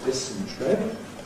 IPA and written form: ˈdɪsn̩tri (dysentery)